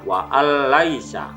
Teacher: Asalnya adalah wa an laisa, tapi nun sukun melebur kepada huruf lam, maka cara membaca yang benar adalah wa al laisa. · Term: idgham bila gunnah